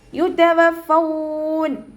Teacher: ഫ ലൈറ്റ് ആക്കിയിട്ട് ഉച്ചരിക്കുക കേട്ടോ. മേലെ മുൻപല്ലിൻ്റെ അറ്റം താഴെ ചുണ്ടിൻ്റെ ഉൾവശത്ത് നനഞ്ഞ ഭാഗത്ത് വെക്കുക.